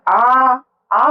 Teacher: ह स्वर है इसमें बोलने में कम टाइम लग रहा हैन आ आ बोलने में हमको डबल टाइम लग रहा है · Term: दीर्घ स्वर